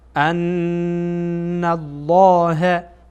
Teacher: واعلموا ان الله نون در اینجا غنه میشه، صدا از بینی خارج میشه و لام جلاله هم پر خوانده میشه